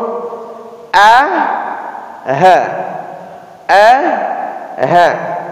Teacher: Tapi kalau hurufnya hamzah, keluarnya di bawah tenggorokan. Keluar di situ dua huruf, A, H, A, H.